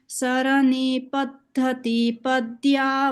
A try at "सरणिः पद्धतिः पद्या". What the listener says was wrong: Here there are visargas. So saranif paddhatif padya.